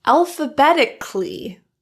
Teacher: Notice it's clee rather than cali.